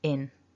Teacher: We've got a short I and then an n up in the nose.